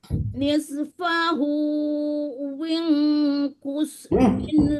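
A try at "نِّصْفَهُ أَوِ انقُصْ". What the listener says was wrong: Awing. Bukan win.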